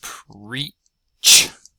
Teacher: that's preach with the ch uh affricate at the end there.